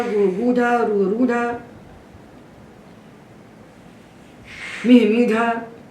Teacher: तो मिह मीढ़ा में हमने ई को दीर्घ किया और गुह गूढ़ा में हमने ऊ को दीर्घ किया